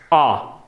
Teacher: आ क्यों विव्रत कहलाता है, क्योंकि इसमें सबसे ज्यादा मुख खुलता है। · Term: विव्रत स्वर